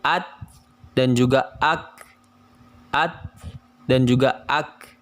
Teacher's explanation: Maka yang paling kecil terletak pada huruf kaf dan juga ta, sehingga terdengar bunyi seperti at dan juga ak